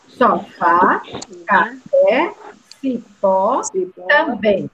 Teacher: Todas essas 4 palavras que eu falei são oxítonas. Por quê? Porque a sílaba tônica é a última.